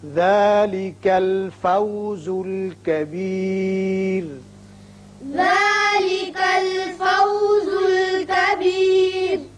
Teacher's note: را وقف کی صورت میں باریک ہوگا اس لیے کہ خود ساکن ہو جائے گا اور پیچھے زیر ہے